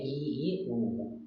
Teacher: संवृत स्वर होता है जिनको बोलने हमारे जो मुंह है ना वो कम खुलता है, मतलब बहुत कम खुलता है।